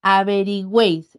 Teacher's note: Todo permanecerá entonces en una sílaba. Al enfatizar, recae en la vocal abierta en la E.